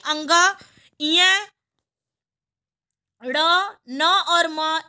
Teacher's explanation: इन पांचों का उच्चारण हमेशा नाक की सहायता से किया जाता है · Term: नासिक व्यंजन